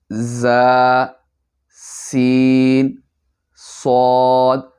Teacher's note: اسی طرح 3 حروف جن کو ادا کرتے وقت، پڑھتے وقت سیٹی کی طرح تیز آواز نکلتی ہے، اور وہ 3 حروف ہیں ز، سین، صاد۔ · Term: حروف صفیریہ